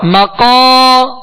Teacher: ہونٹوں کو گول نہیں کریں گے، قاف کو ادا کرتے ہوئے اس کے ساتھ حرف مد ہے، الف مدہ ہے، ایک الف کے برابر کھینچیں گے، قاف کو پر پڑھیں گے، حروف مستعلیہ میں سے ہے.